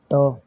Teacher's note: ट बोली जाती है भाई मूर्धा से। ट बोली जाती है मूर्धा से।